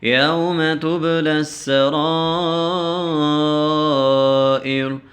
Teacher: سین زبر س، تبلس، را الف مد زبر را، تبلی السرائر، را کے اوپر پیش ہے تو ہم وقف جب کریں گے تو ہم اس حرکت کو چھوڑ دیں گے